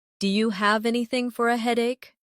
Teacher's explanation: Do you sounds like dia.